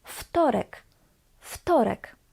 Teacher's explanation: the voiced W, v, changes theme and becomes its voiceless equivalent, which is f.